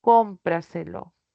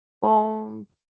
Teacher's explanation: Entonces la sílaba tónica está antes de la antepenúltima sílaba. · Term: sobresdrújulas